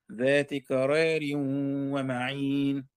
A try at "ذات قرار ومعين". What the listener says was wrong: يا ذات قرار انت حتميل الراء والالف ذات قرار ومعين